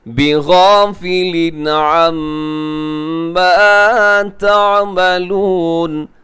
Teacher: میم کے اوپر تشدید ہے تو یہاں غنہ ہوگا. میم مشدد، نون مشدد، دونوں کے اوپر غنہ جو ہے وہ ضروری ہے.